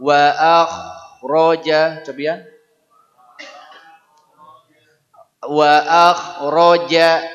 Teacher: Wa akhraja hurufnya kha. Bunyinya ngagerok.